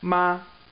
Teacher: first tone it starts out really high just stays high it's flat